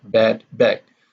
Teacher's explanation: The d and g in bed and bag are both voiced, and they are plosive.